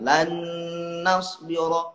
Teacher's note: Nun sama nun jadi dimasukkan. Lan nasbira gunnah agak lamaan. Masuk hidung.